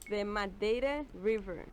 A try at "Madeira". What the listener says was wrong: They don't really put the R as much. Madeira.